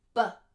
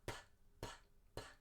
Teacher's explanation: in air and if you put your hand on your throat you'll also feel that your vocal cords vibrate for the BBB but not the pp P because there's phonation with the sound is coming through your vocal